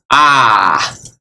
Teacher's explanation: long a you open your mouth all of the way ah or is in short a it's just like a atomic